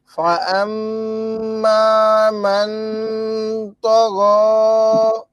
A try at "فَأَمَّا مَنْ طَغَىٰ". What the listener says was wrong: আপনি যেটা করছেন এটা ওয়াজিব গুণ হয়ে গেছে, মান, এটা তো ম্যাং ম্যাং নাকের ভিতর।